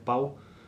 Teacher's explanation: Então, se você tem paz, ou pau nesse caso aqui, né? Pau, o A é a vogal forte, e o centro, e o pico da sílaba, enquanto que o U, ele já está decrescendo, né? Então, por isso que é um ditongo decrescente.